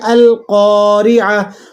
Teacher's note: قاف کے بعد الف ہے تو اسے ایک الف تک لمبا کر لیں گے۔ · را کے نیچے حرکت ہے، را زیر ری ہے، ٹھیک ہے؟ تو آپ نے اسے باریک ادا کرنا ہے۔ · اسی طرح تا پر پیش لگا ہوا ہے لیکن وقف کی حالت میں تا ساکن ہو جائے گی تو یہ گول تا وقف کی حالت میں ہا بن جاتی ہے۔